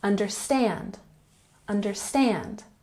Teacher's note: Understand. Emphasize the third syllable.